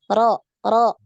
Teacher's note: Jadi bukan ro, ri, ru, tapi sekali aja takrirnya sekali, getarannya sekali.